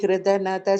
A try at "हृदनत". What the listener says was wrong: HRU கிடையாது, HRA.